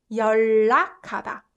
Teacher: We just replace un sound to 을 sound, and that way it's a lot more comfortable for the mouth and the tongue.